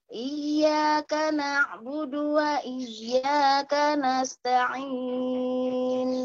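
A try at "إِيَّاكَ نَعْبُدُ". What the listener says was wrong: Na'budunya kepanjangan. Iyyaka na'budu wa iyyaka.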